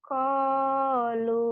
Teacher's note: lu-nya panjang karena wawu mati.